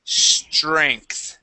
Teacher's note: Okay, so that TR. Okay, we're gonna put TR like a CHR